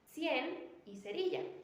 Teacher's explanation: situando la lengua entre los dientes superiores e inferiores, dejando una pequeña abertura por donde sale el aire, sin vibración